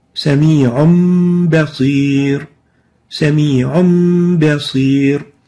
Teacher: Sami'un basir, sami'un basir. We're exchanging the noon of the tanween with a meme, sami'un basir, yet maintaining a ghunna. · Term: iqlab